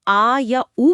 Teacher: जीभ का आगे वाला हिस्सा थोड़ा ऊपर उठता है। लेकिन जब हम आ या ऊ बोलते हैं तो महसूस होता है कि जीभ पीछे से कुड़ गई है और सारा जोर गले के पास है।